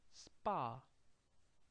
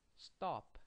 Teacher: quick tensed no air came out of your mouth